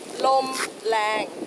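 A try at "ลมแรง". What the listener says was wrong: Well, it's actually rang, so lom rang.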